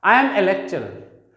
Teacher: अगर हम लास्ट में लेक्चरर शब्द को बोलेंगे, need not to pronounce a last आर